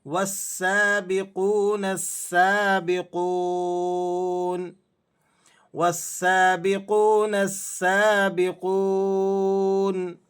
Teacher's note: سین پر تشدید ہے، مشدد ہے، اور اس کے ساتھ ساتھ سین پر کھڑا زبر بھی ہے، تو آپ نے اسے سختی کے ساتھ ایک الف کے برابر کھینچ کر پڑھنا ہے